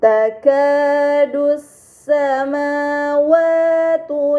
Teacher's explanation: Ini dinamakan alif lam syamsiyah karena hamzah wasal pada alif lam dibaca fathah, lam pada lam syamsiyah tidak dibaca, namun langsung dibaca huruf setelahnya